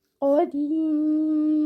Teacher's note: You can stretch your mud over here, which can be given 2, 4, or 6 counts.